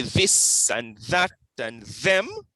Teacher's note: So you have some TH sounds that are voiced, which means that the vocal folds vibrate.